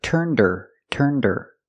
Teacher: Turned her with a silent H is turned her.